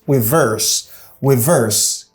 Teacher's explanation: Stress is on the second syllable verse.